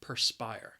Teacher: the word has two syllables and the stress is on that second syllable